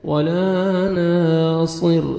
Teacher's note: را کو باریک پڑھیں گے کیونکہ را ساکن سے پہلے زیر ہے